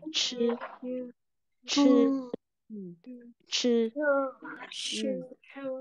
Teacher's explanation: Nhưng mà CH này, chư, chư, chư. Uốn lưỡi và bật hơi nhá. Uốn lưỡi và bật hơi.